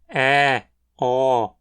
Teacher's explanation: vogais médias periféricas ou seja pronunciadas na metade da altura da boca mas mais para frente ou mais profundo